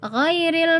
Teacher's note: Nah, ini seringnya kesalahan dibaca dalam surat Al-Fatihah ya, ghairil yang mana seharusnya huruf ghain itu tidak dibaca dipantulkan karena dia tidak termasuk dalam huruf qalqalah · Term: ghain sukun